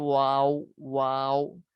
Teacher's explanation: दोनों होंठों की गुलाई से अदा होगा, दोनों होंठों को गोल करने से अदा होगा।